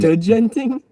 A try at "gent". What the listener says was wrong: D is actually silent in that word, I believe. I've heard people call it gent because the D is silent.